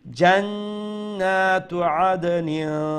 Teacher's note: প্রথমত নুনের উপরে তশদিদ আছে, অর্থাৎ এই নুনকে আমরা ওয়াজিব গুন্না অথবা আকমাল গুন্না বলে থাকি, তো এখানে গুন্না করতে হবে